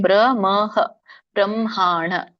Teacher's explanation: ಬ್ರಹ್ಮ ಮ ಹೇಳಬೇಕು ಆಮೇಲೆ ಹ ಹೇಳಬೇಕು